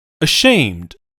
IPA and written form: əˈʃeɪmd (ashamed)